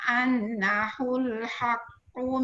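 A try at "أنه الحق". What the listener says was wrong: Sikit lagi Datuk punya nun sabdu tu tak dengar, tak cukup. Faya'lamuna annahul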